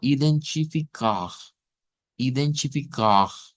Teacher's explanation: Si lo hago con la R uvular, que sería esta, el sonido al final es un poco más sonoro